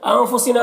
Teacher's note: نون میں اخفا ہوگا، نون کی آواز کو ناک میں چھپا کر پڑھیں گے، نام الف مدہ ہے، ایک الف کے برابر کھینچیں گے۔